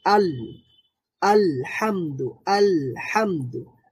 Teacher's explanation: আল বলার সময় সাউন্ডটা পুরোপুরি বন্ধ হয়ে যায় না, আবার আল বলে সাউন্ডটা জারিও থাকে না, মানে সাউন্ডটা চালুও থাকে না আবার বন্ধও হয়ে যায় না। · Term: বাইয়িনার হরফ